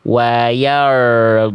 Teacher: Getarannya samar, getarannya kayak orang bule.